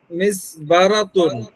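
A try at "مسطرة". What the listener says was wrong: মিস মিসতরাতুন, মিস বা না শব্দ, মিম সিন ত।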